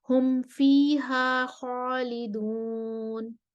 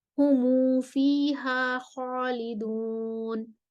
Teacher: اب آیت کے اگلے حصے کی طرف جاتے ہیں، ہم فیہا خالدون پر ہم میم الجمع والا اختلاف ہے، قالون پہلے عدم صلہ کے ساتھ آئیں گے اور پھر صلہ کے ساتھ آئیں گے۔